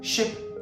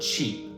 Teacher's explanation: Ship has a short I sound and sheep has a long e sound.